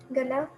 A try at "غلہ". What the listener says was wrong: غلہ. اس کو آپ اس کو گاف سے نہیں پڑھیں گی. غین ہے غلہ.